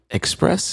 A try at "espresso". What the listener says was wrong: Espresso. Oh, espresso, right? Not X.